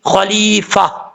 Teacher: یہاں پہ ہا پڑھا جائے گا، تا نہیں پڑھیں گے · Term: گول تا